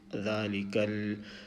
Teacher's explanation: we must make the sukoon sound in such a way that we do not vowelize this lam sound